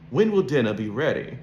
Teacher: We do not pronounce the R because it's followed by a consonant sound.